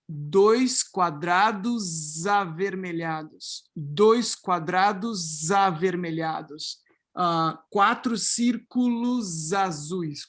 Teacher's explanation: voicing across syllable boundaries of S's before vowels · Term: resyllabification